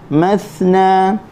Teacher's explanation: Minan nisa'i mathna wa thulatha wa ruba'. Mathna huruf tha, hujung lidah di hujung gigi atas keluarkan sedikit, lepaskan suara, lepaskan angin